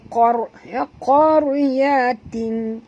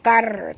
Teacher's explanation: ra sini mati kena tebalkan juga kerana ra bila dia mati huruf sebelumnya baris atas, maka kita kena baca tebal, tak boleh baca kar tapi kena baca qar ya.